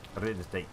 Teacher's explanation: Emphasis on the second syllable.